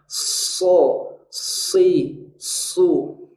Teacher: Shod ini adalah huruf yang selamanya tebal. Mungkin di dalamnya ada kandungan bunyi S, tapi tidak sama. Karena shod selamanya tebal, sedangkan S bebas.